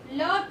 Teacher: सांस जीभ के दोनों ओर से निकलती है, इसलिए इसे पार्श्विक व्यंजन कहा जाता है